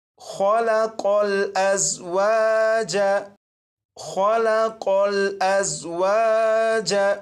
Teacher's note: यहाँ पर देखें, ये जो लफ्ज़ है, इस लफ्ज़ के शुरू में खौ है और यहाँ पर कौफ। खौ और कौफ, इन दोनों हरूफ को पुर यानी मोटा पढ़ेंगे